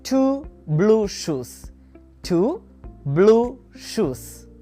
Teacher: Next, we have the sound oo as in blue food. It's the long version of the sound oo. Your lips will be in a rounded position.